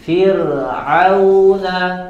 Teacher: itu huruf ro sukun sebelumnya kasroh, tapi kasrohnya kasroh asli, ya, maka dia berlaku dibaca dengan tipis